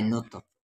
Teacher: یہاں تا پہ ساکن ہے تو قلقلہ ہوگا ۔ فا، اور یہ بھی ایک آیت ہے تو یہ تاہا